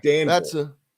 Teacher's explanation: And it's not even just Louisville, or I'll try to be proper here, Louisville, but any city in Kentucky that has Ville in the name, the people around here put Vull instead of Ville